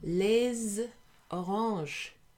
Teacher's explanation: made a little liaison between the S and the O to make it sound like a Z